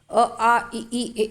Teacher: ओठों की स्थिति के आधार पर अवृत्तमुखी, वृत्तमुखी, अवृत्तमुखी, वृत्तमुखी, नाम से ही स्पष्ट हो रहा है। ओठों की स्थिति वृत्तमुखी या गोलाकार नहीं होते हैं, वहाँ पर अवृत्तमुखी होता है